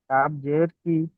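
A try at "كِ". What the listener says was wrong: কাফের টানটা দেন,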